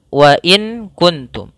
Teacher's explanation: maka dalam hukum tajwid kita namakan dengan bacaan Ikhfa ikhfa ikhfa yaitu membaca suara nunnya disamarkan kepada huruf Kaf